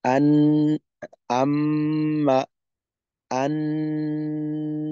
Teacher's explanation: গুন্নাকে পরিপূর্ণভাবেই নাকে নিতে হবে · যে মাখরাজের জায়গা আছে নিজস্ব জায়গা আছে ওইটা ঠিক থাকবে যেমন মিমের মাখরাজ মিমেই থাকবে নুনের মাখরাজ নুনেই থাকবে বাকি গুন্নার কারণে আওয়াজটা নাকে যাবে